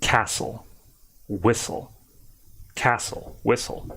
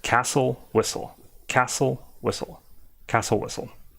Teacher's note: it's almost like to me the T isn't even there